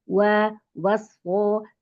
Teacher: yang tebal huruf shadnya bukan waunya